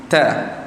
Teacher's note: Letak di bahagian mana? Lidah, hujung lidah letak di bahagian gusi atas. Gusi hampir pada gigi kan. Ta. Kemudian kita tekankan sedikit pada huruf sebut kerana sifatnya itu tekan. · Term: huruf ta